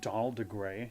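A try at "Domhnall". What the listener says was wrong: No, there's no D at the end. There's an H in there. It's like Don Hall.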